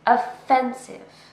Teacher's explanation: This word has 3 syllables, offensive, and we stress the second syllable.